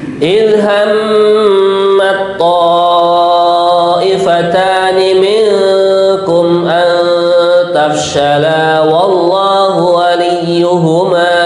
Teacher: Maksud daripada idgham langsung seakan-akan membunyikannya adalah to yang bertasydid. Seakan-akan taknya sudah nggak ada.